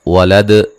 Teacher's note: दाल पे वक्फ़न क़लक़ला करेंगे, क़लक़ला को वाज़े करेंगे। मिलाने की सूरत में नून तनवीन का बारीक इख्फ़ा होगा।